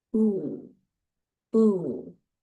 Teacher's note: it's high, but your tongue is also pulled back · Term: high vowel